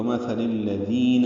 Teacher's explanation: لام کو الذین کے لام سے ملا دیں گے تو کمثل الذین ہے، ذال نرمی سے ادا ہوگا اور دو حرکات لمبا کریں گے۔